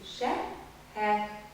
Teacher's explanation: татарский «х» более заднего глоточного происхождения